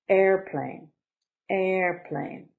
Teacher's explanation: Airplane, noun, 2 syllables. Stress is on the first.